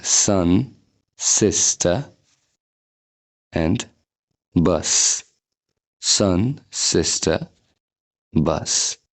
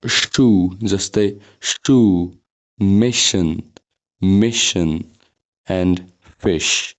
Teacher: सन भन्दाखेरि यस्तो पातलो स आछ शू भन्दाखेरि मोटो स आछ यो पातलो स प्रोड्युस गर्दा ओठहरू स्प्रेड हुन्छ स्माइल गरेको जस्तो पोजिसनमा आउँछ यसरी अनि यो मोटो स प्रोड्युस गर्दाखेरि ओठहरू राउन्डेड पोजिसनमा आउँछ ओभल पोजिसनमा आउँछ जस्तै ओके शू